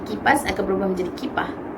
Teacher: Perkataan yang berakhir dengan huruf S akan berakhir menjadi huruf H.